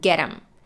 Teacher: When she connected get them, she dropped the TH and we got get 'em, leaving just the word all unchanged.